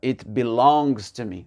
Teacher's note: l'accent tonique sur la deuxième syllabe.